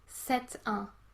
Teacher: here you pronounce the T because it's followed by a vowel sound